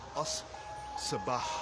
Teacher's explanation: Now if we add the definite article on the beginning of this word, it becomes a sabah. Because sad is a sun letter, we have to eliminate the lam from the definite article and duplicate the sad. So it becomes as sabah, the morning.